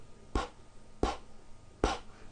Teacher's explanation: your vocal cords are not producing a sound so therefore the P sound is what we call unvoiced